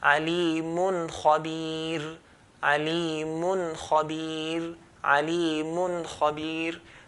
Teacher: One, make the nun clear. Secondly, we do not produce the extra ghunnah. Just hold, touch, let go. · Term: idhaar